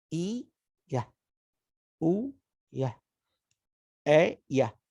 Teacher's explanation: death song in this column all share the final schwa okay they are all ending in schwa in the end